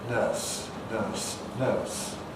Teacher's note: in English, we've simplified things by losing that R coloration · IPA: /nɜːs/